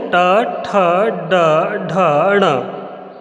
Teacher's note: तो तालु के ऊपर वाला भाग मूर्धा, ये इसमें वायु मूर्धा पे आके टकरा रही है, तब जा कर के हम टा वर्ग के वर्ण उच्चारित कर पा रहे हैं।